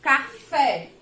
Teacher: aqui na sílaba fé, né, da palavra café, eu pronunciei com mais intensidade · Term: sílaba tônica